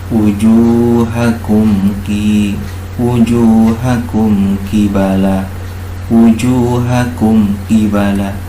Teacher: Wujuhakum kibala, wujuhakum kibala, mim mati bertemu dengan ba. Cara membacanya, mimnya ini dibaca idhar, ya, atau jelas. Ini dinamakan dengan idhar syafawi.